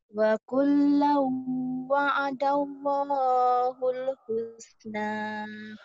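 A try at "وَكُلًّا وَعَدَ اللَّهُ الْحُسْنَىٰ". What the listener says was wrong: Hamasnya keluarin. Husna, hamas itu kan yang kita tahu adalah tap, ta sama kaf mati. Ini huruf-huruf hamas hidup. Husna gitu. Husna ada desahnya.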